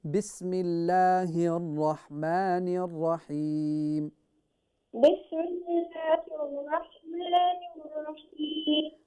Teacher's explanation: When we say Bismillahir Rahmanir Rahim, the ha is pronounced from the bottom of your throat